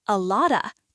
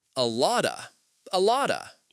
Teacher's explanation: The T in lot becomes a soft duh sound.